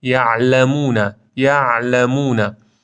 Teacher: عین مابین شدت و رخوته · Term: صفت توسط